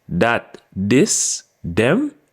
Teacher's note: the sound in Jamaican is converted to a d and make the D sound